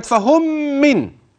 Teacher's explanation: ليه تنوين واتى بعده ميم الثانيه اسمها ادغام تماثل صغير ليه ميم ساكنه ادغمت في الميم المتحركه بعدها